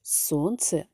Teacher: в слові сонце наголос падає на перший склад